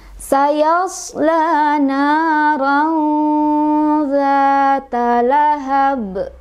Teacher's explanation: Sayas diasad, sad punya sifat safir, artinya ada siulan, ada desisan ya